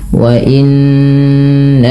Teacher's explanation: Pada lafal wa innahu tahan bunyi suara nunnya sepanjang 2 harakat karena ia bacaan gunnah.